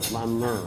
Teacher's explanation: the double L is guttural